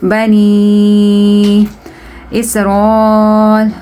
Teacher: Okay, and this is madde munfasil. You have to stretch it according to 4 alif. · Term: madde muttasil